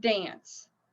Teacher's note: So the word dance, the final sound, remember it's not the letters, it's the sound. The final sound is s. It's unvoiced, right?